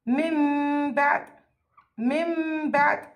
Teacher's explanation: هيك بصير لفظها مع وجود الغنة بمقدار حركتين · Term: الإقلاب